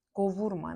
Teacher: ma inkar şəkilçisi olanda vurğu qəbul etmir. Və qəbul etmədiyinə görə vurğu özündən əvvəlki hecanın üzərinə düşür.